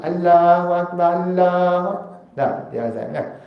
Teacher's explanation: Sebab Allah itu dia ada bacaan secara tafkhim, tebal. Kalau tebal, tebal sungguhlah.